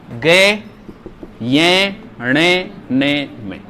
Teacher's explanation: वो व्यंजन जो किससे बोले जाते हैं, नाक से बोले जाते हैं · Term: नासिक